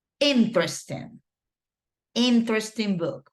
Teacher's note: The stress or the accent, let's say, goes in the first syllable